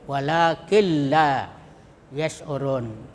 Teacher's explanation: Cara membacanya itu mengidgamkan nun atau tanwin pada lam tetapi tanpa mendengung